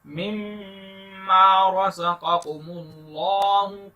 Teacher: میم مشدد آ گیا ہے تو اس لیے یہاں پر غنہ کریں گے